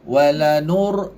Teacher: muncung nu ni muncung sebab baris depan